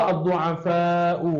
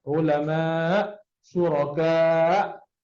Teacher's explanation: Jadi semua tu dikira hukum muttasil berada di akhir. Muttasil berada di akhir, maka boleh dibaca dengan 4, 5 atau 6 harakat.